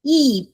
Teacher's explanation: So e becomes fourth tone.